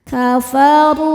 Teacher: Kafaru ru hukumnya mad thobi'i zohiri. Sebab ada wau sukun sebelumnya dommah. Cara bacanya panjang dua harakat. · Huruf ro dibaca tafkhim karena berharokat dhammah. Cara bacanya ditebalkan.